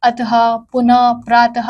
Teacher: विसर्ग संस्कृत भाषा की ध्वनि है इसका उच्चारण ह के समान किया जाता है